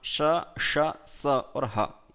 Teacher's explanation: उष्म वर्णों का ईशद विवृत प्रयत्न रहता है।